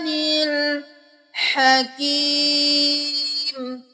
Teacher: हा गले के दरमियान से अदा करेंगे